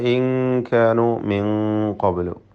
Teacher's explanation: ഇൻ കാനു മിൻ ഖബ്ലു, ഈ രണ്ട് പദത്തിലും സാക്കിനായ നൂനിനെ ഇഖ്ഫ ഹഖീഖി നൽകി അവ്യക്തമാക്കി മണിക്കണം. കാഫിൻ്റെ മുമ്പിൽ ഇസ്തിഫാൽ തർക്കീഖാണ്, നൂനിനും തർക്കീഖ് തന്നെ.